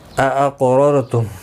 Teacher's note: اقررتم کسی بھی حرکت والے حرف کو کھینچنا نہیں، قاف ساکن پر قلقلہ ہوگا، پر بھی پڑھا جائے گا